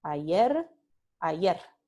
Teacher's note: la simple ocurre al final de un enunciado, a veces o muchas veces, si no siempre, se pronuncia como sorda. Ra, ra, ra.